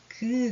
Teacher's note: 직접 발음해보면 어떤 소리들이 여기에서 장애를 받느냐 바로 그 하는 소리예요. 그 하면은 우리 목구멍 가까이 혀가 좀 붙었다가 떨어지면서 나는 소리가 나죠. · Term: 여린 입천장 소리